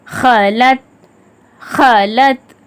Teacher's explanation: கத், கத், அந்த சவுண்டோட முஸ்தாலியாக்கான சவுண்ட் கத், அந்த மாதிரி ஓதணும் கல்கலா செஞ்சு. ஹாவும் ஒரு முஸ்தாலியா தான், கொஞ்சம் தடிவன ஹ அந்த சவுண்டோட